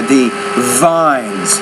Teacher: doesn't sound like a bee you got to put more vibration there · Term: V consonant